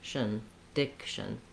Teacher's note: My TION ending just sounds like shun. Almost no vowel there at all. I move right from the SH to the syllabic N.